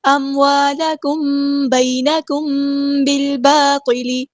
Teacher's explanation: اموالکم بینکم بالباطل، دیکھیں یہاں پہ اموالکم، الف مدایا ٹو کاؤنٹ لمبا کریں گے، میم ساکن کے بعد دیکھیں با آیا ہے، اخفاء شفوی ہو رہا ہے